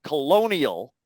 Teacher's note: on that word colony if we take a related word colonial it's the second vowel upon which main stress is fallen